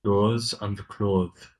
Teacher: There's no th sound, okay? It's just close.